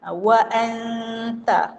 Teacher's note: Adapun yang macam wa anta, anta itu dipanggil ikhfa hakiki, disembunyikan secara hakikat dia. Nun tu tak bunyi. Wa anta, ikhfa, sembunyi.